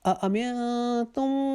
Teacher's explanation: نون ساکن کے بعد اخفا کریں گے، ایک الف کے جتنا رکیں گے